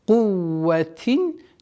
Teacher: ذي, долгота в размере двух огласовок кесра удлиняем. Кувватин, четкое ясное произношение танвина кесра, потому что это правило изгар.